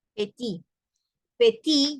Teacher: no solamente la T es muda, sino también la E. Ahí es una sílaba completa que es muda. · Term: letras mudas